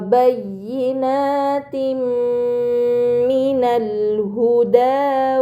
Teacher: Ini dinamakan idgham bi gunnah, maka kasrah tain dibaca secara melebur dengan gunnah yang dipanjangkan